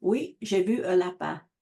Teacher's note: she just uses a schwa here for the indefinite article in French